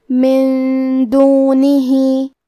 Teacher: دال حروف الاخفاء میں سے ہے، اور اخفاء کا معنی ہے چھپا دینا، تو ہم نون ساکن کو چھپاتے ہوئے اور غنہ کے ساتھ یہ حکم کو ادا کریں گے